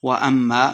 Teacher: میم مشدد ہے تو غنہ کر کے پڑھنا ہے